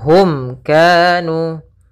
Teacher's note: Kemudian hum kanu pada lafal mim bertemu dengan kaf, ini kita namakan dengan izhar syafawi, yaitu suara mimnya harus dengan jelas, tidak boleh ditahan.